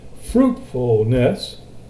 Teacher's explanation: Fruitfulness, that full is unaccented, fruit is accented